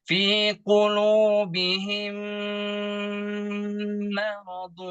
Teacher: Ada mim mati di sana bertemu dengan mim tasdid. Maka kita sebut dengan idgham mislain. Jadi ditahan.